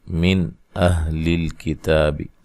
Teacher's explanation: یہاں نون ساکن کا اظہار ہے، غنہ نہیں کریں گے، من نہیں کریں گے، یا من نہیں کریں گے، من اہل الکتاب، ٹھیک ہے۔ · لام کو ہلانا نہیں ہے، حروف قلقلہ کے سوا کسی بھی حرف کو حالت جزم میں ہلا کر نہیں پڑھا جاتا